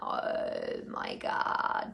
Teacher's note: The vocal fry or glottal fry is a way of speaking in which the voice is low-pitched and has a characteristic rough or creaking sound. In practice, this means that you restrict your voice at the back of your throat and you create a fry, as in, oh my God.